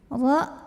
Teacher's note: dibunyikan secara tafkhim karena barisnya Fatah maka bacanya tebal pangkal lidah dinaikkan